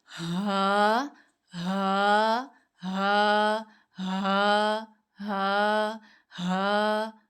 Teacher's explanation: नीचे से हलक के आखिरी हिस्से से आवाज़ निकालनी है और थोड़ी-सी बारी आवाज़ होती है, जैसे मर्दों की होती है ना, जब वो यंग हो रहे होते हैं, थोड़ी-सी बारी-बारी आवाज़ आ रही होती है, सीने से निकलती है, तो वहाँ से इसको अदा करना है।